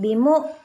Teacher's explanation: kita sentak ini hamzah bukan ain